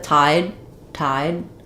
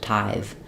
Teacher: with tide tide I'm just going to stop the air I won't necessarily release that D but with tithe I have to keep the air flowing